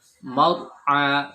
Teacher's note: Nah, itu terlalu banyak getarannya. Getaran huruf ro itu hanya satu, mar'a, baik tafkhim tebal atau tipis.